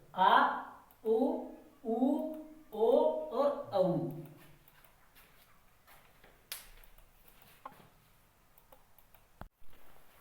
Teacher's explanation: पश्च स्वर, जीव के पिछले भाग से बोले जाते हैं उन्हें कहते हैं पश्च स्वर।